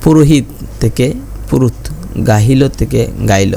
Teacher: আধুনিক চলিত ভাষায় অনেক সময় দুই স্বরের মাঝামাঝি হকারের লোপ হয় যেমন পুরোহিত থেকে পুরুত গাহিল থেকে গাইল হকার মানে হ যেটা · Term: হকার লোপ